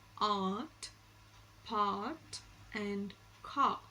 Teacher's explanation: Finally, we have the last vowel, back vowel, which is the R sound. The R sound is described as a back open unrounded vowel